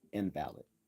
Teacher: So, when we accent the first syllable, we are speaking of a sick person, invalid. But when we accent the second syllable, we are speaking of an argument failing to meet the deductive standard of being valid